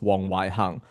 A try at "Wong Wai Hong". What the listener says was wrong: pronunciation is Hong. I understand why you say Wong Wai Hang, because Hung, right? And my teacher used to call me Wong Wai Hang too, until I say, no, it's Hong.